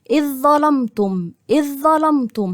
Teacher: الحرف الاولاني ساكن والثاني متحرك هنا برضه اذ ظلمتم اذ ظلمتم هخش من الهمزه المكسوره على الظاء على طول فبقت الظاء مشدده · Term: ادغام كامل, إدغام كامل